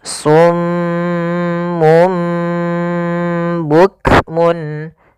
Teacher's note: Maka pertama ditahan dulu suara m-nya karena dibacaan gunnah. Kemudian ketika lafal mum itu langsung matikan di sini dan ditahan suara gunnahnya. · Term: iqlab